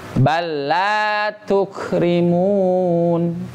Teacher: walaupun idgham tapi jangan dengung. Dengung itu hanya milik mim dan nun saja.